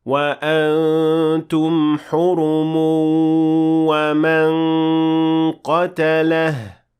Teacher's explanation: However, if you keep on reading, you will have to merge or apply idgham with غنة, since you will merge the tanween or the nun sakina in this case with the waw that follows it